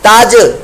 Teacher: یہ جیم ساکن قلقلہ ہو رہا ہے